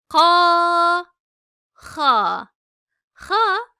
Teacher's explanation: dil kökünden yani ağzın en gerisinden kalın ve Tok bir sesle çıkarılır